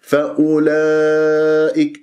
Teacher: اجتمع حرف المد والهمزة في كلمة فأولئك، إذن كلمة واحدة، إذن مد واجب متصل أربعة أو خمس حركات